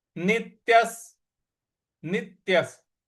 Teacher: नी के बाद जो आधा त है उस पर आघात देना है। नित्यस, य के बाद जो विसर्ग है उसका उच्चारण हमें स ले आना है